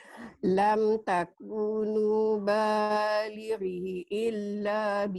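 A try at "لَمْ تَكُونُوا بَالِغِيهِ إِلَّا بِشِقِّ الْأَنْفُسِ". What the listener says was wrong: balighihi illa ya. Baligi panjang Makcik. Balighihi illa giginya panjang.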